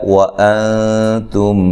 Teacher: یہاں نون ساکن کا اخفا ہے مع الغنہ، باریک اخفا ہے، یہاں میم ساکن کا ادغام ہے، تم غنے کے ساتھ ادغام کرنا ہے۔